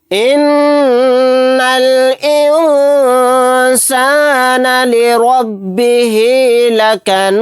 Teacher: نون کے اوپر تشدید ہے، یہاں پر غنہ کر کے پڑھیں گے، نون کو لام ساکن کے ساتھ ملائیں گے، یہ الف نہیں پڑھا جائے گا۔